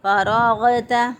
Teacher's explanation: غین کو ہم جو ہے ادنی حلق سے ادا کریں گے، یعنی گلے کا وہ حصہ جو کہ منہ کی طرف ہوتا ہے وہاں سے غین ادا کیا جائے گا